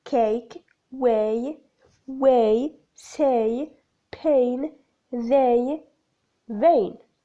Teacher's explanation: there is a slight closing movement of the lower jaw. The lips are spread. Characteristics of the diphthong /eɪ/ the glide begins in the position for /e/ moving up and slightly back towards /ɪ/ lips are spread.